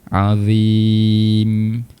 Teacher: Makhraj huruf mim di bahagian bibir perlu rapatkan kedua bibir kita